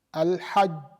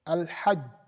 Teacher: For the Jim, Al-Hajj, there is no flow of air.